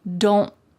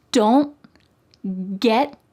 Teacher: My tongue is at the top of my mouth, like it's going to make that T shape, but I just don't let the air come out. Don't get, my tongue is stopped at the top of my mouth. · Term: stopped T